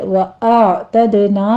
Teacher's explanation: حمزہ کی ساؤنڈ پہلے آئے گی، پیچھے عین کو وسط حلق میں لے جا کے سٹاپ کرنا ہے، دال کے اوپر قلقلہ کریں گے.